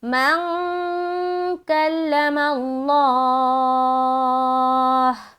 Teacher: مخرج کو جا کر نہیں لگے گی آواز اور ناک سے آواز گویا کہ معلوم ہوگی کہ آپ ناک سے پڑھ رہے ہیں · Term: اخفاء